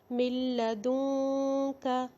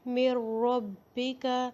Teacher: ہم ڈائریکٹ میم کو لام کے ساتھ ملائیں گے، نون کو سائلنٹ کر دیں گے، نون کی آواز نہیں آئے گی. جب ہم نے ادغام بلا غنہ کیا تو نون ساکن لام کے اندر مکس ہو گیا، اتنا مکس ہوا کہ اس کی آواز ہی نہیں آئے گی.